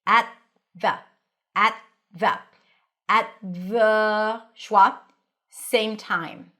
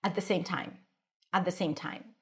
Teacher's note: place your tongue on the teeth for the t at. And then it's already ready for the th the atthe. You don't have to pop the t at.